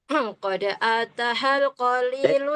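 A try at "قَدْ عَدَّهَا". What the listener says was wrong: Qad adda. Itu dalnya bertasydid.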